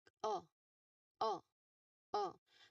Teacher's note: So this is a sound with your um tongue low and uh at the back of your mouth. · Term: O sound